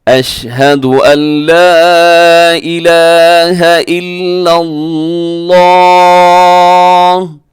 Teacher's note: आखिर में जो है वो आता है जी लफ्ज़ अल्लाह, वो अपने पुर पढ़ना है, मोटा पढ़ना है।